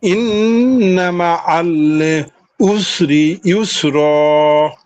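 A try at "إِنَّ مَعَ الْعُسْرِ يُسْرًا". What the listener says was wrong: হ্যাঁ, মাশাআল্লাহ সুন্দর হয়েছে পড়া।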